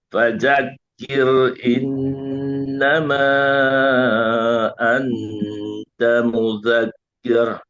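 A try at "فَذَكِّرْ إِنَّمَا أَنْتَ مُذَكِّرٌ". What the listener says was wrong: Yang pertama jangan fajak, jangan j tapi za.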